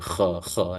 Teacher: Dia adalah kha ya. Dia sedikit macam bergetar di antara lidah kita dengan kawasan belakang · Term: huruf Kha, huruf kha